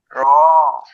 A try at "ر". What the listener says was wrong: মুখ গোল হবে না। র মুখ থাকবে নর্মালি, গোল হবে না, কাজ হবে মুখের ভিতরে।